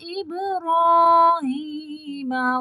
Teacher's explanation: با کو قلقلہ پڑھنا ہے